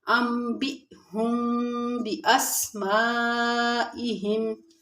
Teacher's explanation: حمزہ ساکن کو ہلکے سے جھٹکے کے ساتھ پڑھتے ہیں۔ انبئهم باسمائهم، اب انبئهم باسمائهم میں دیکھیں یہاں پہ ہم نے تھوڑی دیر آواز کو بند کیا۔